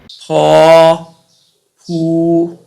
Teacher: 雙唇塞音，發音時用雙唇閉塞阻住氣流，再用力以較強嘅氣流衝破雙唇而成音